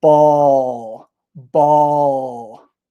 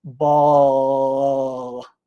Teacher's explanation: the dark L is the L that we often have at the end of a word. And for this one, your tongue actually goes down.